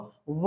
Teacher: तालू रहेंगे व का चलते हैं तो वकार वकार मतलब व व का रहेगा दंत और ओट अर्थात दांत और ओट से बोले जाएंगे